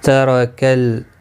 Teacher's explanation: را زبر کی وجہ سے پر پڑھا جائے گا